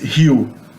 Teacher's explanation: Sounds like hill in English, but without the L at the end, as if it's W in the end. · the letter R in the beginning of a word in Portuguese is pronounced like an H in English, Rio, and the letter O at the end of a word is pronounced like a U, usually if it's unstressed.